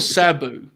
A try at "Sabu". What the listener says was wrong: sounds like you're saying Shabu.